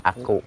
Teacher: Jadi huruf kaf ini dia makhrajnya ada di pangkal lidah, sama kayak kof kemarin.